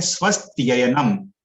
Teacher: हम लोग को एक साथ बोलना है स्वस्त्ययनम संधि करके